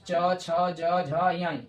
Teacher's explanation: च वर्ग जो होता है यानी च का जो वर्ग है, च छ ज झ य, यानी ये तालु से निकलेगा